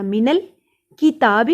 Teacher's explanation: تا کے اوپر کھڑی زبر ہے، الف کے برابر لمبا ہوگا. تا کو ادا کرنے کے لیے زبان کی نوک کو دانتوں کی جڑوں سے لگائیے.